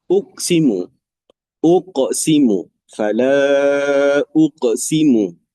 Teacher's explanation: Uqsimu huruf qaf dia termasuk huruf qalqalah. Jadi huruf qalqalah kena lantunlah. Ada lantunan di situ.